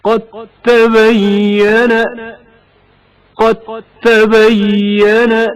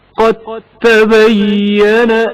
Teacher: مثلا دال ساکن کا تائے متحرک میں ادغام ہونا. قد تبين دال ساکن کی آواز واضح طور پر سنائی نہیں دیتی، اس کے بدلے تا کی آواز تشدید کے ساتھ ادا ہوتی ہے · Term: ادغام متجانسین